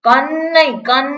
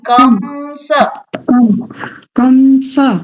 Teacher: અનુસ્વારમાં નકાર નહી આવે મકાર આવશે